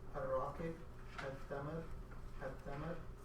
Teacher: when reading al-raqib, al-tamar, al-tamar, the lam of alif lam is silent. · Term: sun letters